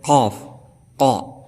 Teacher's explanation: Jadi makhraj huruf daripada huruf qaf ini terletak pada bagian lidah paling dalam dan langit-langit mulut yang berdaging, qaf, qa. Adapun cara pengucapannya seperti huruf ki, tidak boleh disertai nafas.